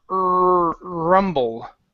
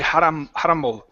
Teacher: I'm using my teeth to hold my tongue down instead of using a narrow tongue